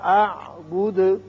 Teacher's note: اعبد پڑھیں گے، دال کی صفت قلقلہ بھی ادا ہوگی